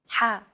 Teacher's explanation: sound is pronounced very deep in the throat you want to make an H sound but with the throat constricted a little ha one trick to produce this sound is to push your